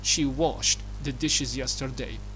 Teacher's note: لاحظوا الـ ED في النهاية نطقناها ت.